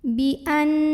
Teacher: An di sini ada hukum gunnah musyaddadah karena nunnya bertasydid. Maka cara membacanya adalah didengungkan. Bunyi an-nya tahan kurang lebih 2 harokat.